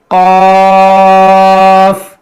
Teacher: اس کا مخرج ہے زبان کی جڑ اور وہ تالو کا نرم حصہ. زبان کی جڑ, جہاں سے زبان جہاں سے شروع ہوتی ہے وہاں سے, یعنی جڑ, زبان کی جڑ اور تالو کا نرم حصہ.